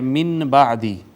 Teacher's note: نون ساکن یا نون تنوین کے بعد با آ جائے تو با اپنے ما قبل کو چھوٹی میم سے بدل دے گی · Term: اقلاب